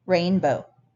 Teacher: It's written with 1, 2, 3 different vowels, but it only has 2 syllables, 2 vowel sounds when it's said.